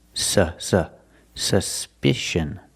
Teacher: the U is pronounced with a short sound uh like cup and up s s suspicion the second syllable is the short I like